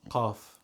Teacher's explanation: in Egypt calf gets like a glottal stop